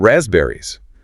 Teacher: that S often sounds more like a Z. And the P, completely silent.